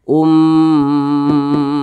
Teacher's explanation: Maka ini didengungkan. Didengungkan itu suara kita tuh ditahan atau dipanjangkan kira-kira 2 harakat. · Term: gunnah musyaddadah